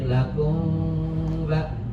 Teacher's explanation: Makanya harus ketemu nih dua bibir. Kalau mau ketemu mah jadi lakum ba. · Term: ikhfa safawi